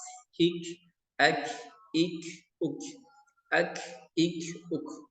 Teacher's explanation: Nah, kalau kaf ini dia sifatnya hams ya. Jadi mengeluarkan nafas, hembusan nafas.